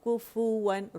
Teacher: مخرج سے کیف کو نکال کے اس کو رول کر دینا ہے. پھر ہم نے فا کے مخرج کو پکڑ کے اس کو گول کرنا ہے، اسی گولائی سے واو بھی ادا ہوگا